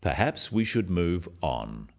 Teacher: this falling intonation makes it a more definite statement rather than a suggestion · The first one, perhaps we should move on, is phrased as a suggestion, but it is said in a firm way with a falling intonation at the end